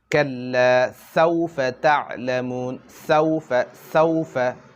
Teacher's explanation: এটা আদায় করার সময় যেমন কুকারের সিটি রয়েছে, সিটি যেরকম আওয়াজ বাহির করে সেরকম একটি আওয়াজ বাহির হতে হবে। যেমন কাল্লা সাউফা তা'লামুন, সাউফা, সাউফা, এটা পাতলা হবে না, এটা সিটির আওয়াজ বাহির হতে হবে। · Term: সিন